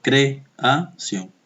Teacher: Porque son dos vocales abiertas. Se deben separar.